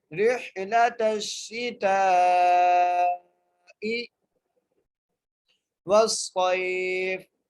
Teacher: تا کے ساتھ کیا آ گئی ہے؟ مد آ گئی ہے، تو اس لیے ہم اس کو کھینچ کے پڑھیں گے۔ آگے واو کو صاد سے ملائیں گے، صاد کو موٹا کر کے پڑھیں گے، والصیف، اچھا صاد کو یا سے ملائیں گے، یہاں پر حرف لین کا قاعدہ لگ رہا ہے، بغیر کھینچے پڑھنا ہے، والصیف، ٹھیک ہے، اور فا کو ساکن کریں گے وقف کی صورت میں۔